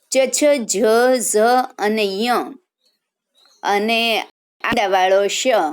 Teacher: ચ છ જ ઝ અને ય અને આડાવાળો શ એ બધા તાલવ્ય કહેવાય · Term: તાલવ્ય વર્ણ